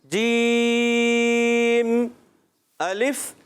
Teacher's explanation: جیم زبان کے درمیان اور تالو کے درمیان سے ادا ہوتا ہے۔